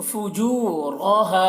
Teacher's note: یہاں پر واو کے اوپر جزم ہے تو واو کو جیم سے ملا کر پڑھیں گے، فجو، اور کھینچ کر پڑھیں گے کیونکہ یہاں پر واو مدہ بھی ہو رہا ہے، واو ساکن سے پہلے پیش ہے تو واو مدہ ہو تو ایک الف کے برابر اس کو کھینچ کر پڑھیں گے، را کو موٹا کر کے پڑھیں گے، را کے اوپر زبر ہے